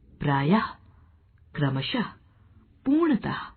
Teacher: विसर्ग का उच्चारण हल्के ह के समान होता है, जैसे प्रायः, क्रमशः, पूर्णतः।